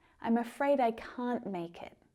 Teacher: And that word can't is stressed.